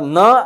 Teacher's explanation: न में नासिका से भी थोड़ा सांस बाहर आएगा इसलिए उसको अनुनासिक कहते हैं कि पहले उच्चारण की शुरुआत दांत से होगी और फिर नासिका